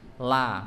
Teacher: tepi lidah bagian depan itu menempel ke gusi belakang gigi seri yang depan atas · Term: huruf lam